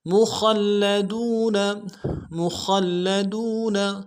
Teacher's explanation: خا کو موٹا کر کے لام کے ساتھ ملائیں گے، لام کے اوپر تشدید زور دیں گے ، اور دال کو واو کے ساتھ ملانا ہے، واو مدہ